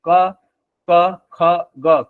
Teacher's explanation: कंठ से। कंठ से सीधे आवाज आ रही है, कहीं और टच नहीं हो रहा है। तो क वर्ग के व्यंजन कंठस्थ व्यंजन हो जाएंगे, कंठ व्यंजन हो जाएंगे।